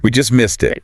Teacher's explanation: We just missed it, emphasizing just to show how close they were.